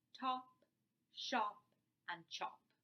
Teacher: So to illustrate a easiest way to do this is to produce the words top, shop and chop. Top is produced with a stop. Shop is produced with a fricative and chop is produced with an africate.